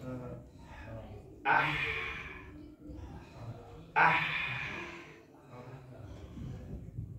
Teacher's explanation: with ha, you'll be pushing air out, friction of that air passing through the small opening generates the ha sound.